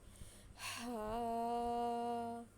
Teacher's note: یہ والی جو ہا ہے بڑی ہا، ہم نے اس کو حلق سے نکالنا ہے